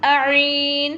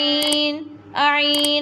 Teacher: Ain pronounced from the middle part of throat.